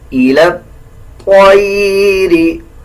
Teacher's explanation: طا کو بھی موٹا پڑھا جائے گا اور لام کو اس طا کے ساتھ ایڈ کر کے پڑھیں گے